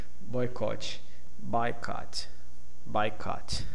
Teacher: Okay, so we have two different kinds of stress: a primary, a major, and a secondary, minor. Okay, both syllables are stressed, but the first receives a stronger stress than the second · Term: Major stress, minor stress